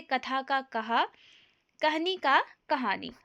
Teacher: महाप्राण ध्वनियों के स्थान पर ह के प्रयोग की प्रवृत्ति अभ्रंश से ही हिंदी में आई है।